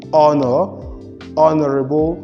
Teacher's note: the h and these words are not realized so these are exceptions to the sound the voiced glottal fricative